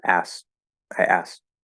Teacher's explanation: we usually drop the k not the t so i don't know what's going on there but maybe it's